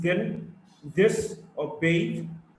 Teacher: Th and think, or bath, or tooth. The is a voiced dental fricative